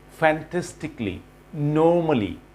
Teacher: খুব সংক্ষেপে আমাদেরকে কালির পরিবর্তে বলতে হবে ক্লি